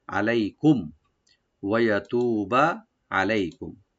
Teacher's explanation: ওয়া ওপেন রাখবেন, ইয়া ওপেন থাকবে, তু একালে টানবেন, বাতে কোনো টান নাই, ওয়াতুবা আলাইকুম, আলাইকুম আইনটাকে এইভাবে ভার্টিক্যাল করে রাইট দিবেন, লাই এখানে হারফে লিন, আর কুম মিম সাকিন এখানে জাহার করবো, আর এখানে আমরা থেমে যাব, এখানে ওয়াকফ করে নেব ইনশাআল্লাহ, ওয়াকফ করাটা জরুরি এখানে।